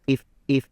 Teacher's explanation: I would say the I on if is a little too long.